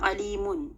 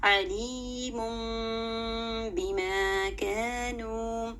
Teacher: آپ نے دیکھا میم کے اوپر 2 پیش کی تنوین ہے، میں نے اس کو نہیں پڑھا علیمن، ہم اس کو نہیں پڑھیں گے، ہم اس کو پڑھیں گے علیم بما کانوا، یعنی میں نے میم کے اوپر جو تنوین ہے اس کی ساؤنڈ کو میں نے میم سے بدل دیا، اس طرح سے پڑھا ہے علیم بما کانوا۔